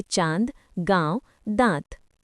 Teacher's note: ऐसे स्वरों का उच्चारण नाक तथा मुंह दोनों से होता है और उच्चारण में लघुता रहती है। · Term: अनुनासिक